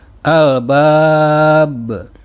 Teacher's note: Kemudian bacaannya waqaf. Panjang mad aridi sukun antara 2 sampai dengan 6 harokat. Sedangkan qalqalah kubro terjadi sebab huruf qalqalah, yaitu ba, sukun karena diwaqafkan, dan pantulannya lebih kuat dibandingkan dengan qalqalah sugro.